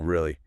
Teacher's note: And mood 3, doubtful. Really, slow fall, maybe a little vocal fry in there.